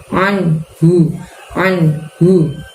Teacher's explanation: Bacaan hu itu, huruf hu kita keluarkan dari tenggorokan bagian bawah. Hu-nya tebal.